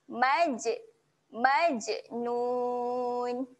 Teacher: Jim ketika mati sifatnya ada lantunan jadi kita kena lantunkan bunyi Jim mati